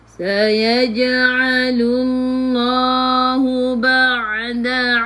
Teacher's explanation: Ain ada sukun. Ain daripada kerongkong, bukan daripada hidung.